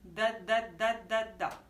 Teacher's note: Hein, c'est ce qu'on appelle dental. Elle va venir taper sur les dents, derrière les dents du haut.